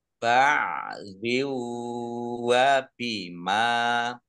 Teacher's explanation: Kasroh tanwin bertemu dengan huruf wawu, idgham bi gunah, masuk dengan mendengung. Mendengung wawu, ditahan 2 harokat.